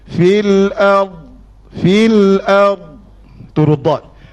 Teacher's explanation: istitalah maksudnya panjang tepi lidah bersentuhan dengan gigi geraham atas, kiri ataupun kanan.